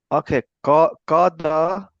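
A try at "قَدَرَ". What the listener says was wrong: Excellent, excellent, mashallah.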